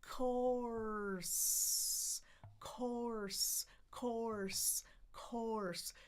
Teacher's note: We need to lift the tongue because it's the vocalic R, and the sides are going to touch the molars.